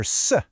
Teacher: Or you go to southern China and you might hear s instead of shuh.